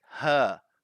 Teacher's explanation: because I've got the British accent and because of that I don't pronounce the R so I say I say her but American speakers or people